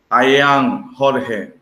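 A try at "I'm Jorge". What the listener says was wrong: Okay, en ese caso sonó sin contracción. Por favor, usa la contracción.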